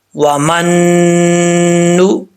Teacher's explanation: میم نون زبر من، نون پیش نو، من نو۔ اب یہاں پر ایک الف کی مقدار غنہ ہوگا